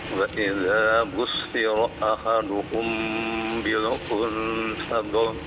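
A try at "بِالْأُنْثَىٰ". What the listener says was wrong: unsa dua harokat ya.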